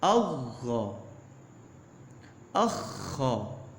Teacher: غین اس واسطے پڑھ رہا کہ غین اور خا انہوں دونوں دا مخرج ایک ہے، خا اور غین، تاکہ انہوں وچ آسانی رہے پڑھنے وچ۔